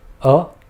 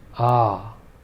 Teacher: Notice how the first short vowel was just a short rap of a sound, whereas the longer vowel was more drawn out. Also, in this case, the vowel sounds themselves are distinct.